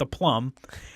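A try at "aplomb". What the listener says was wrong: not with a plum, but with a plum. APLUMB, not a space PLUM.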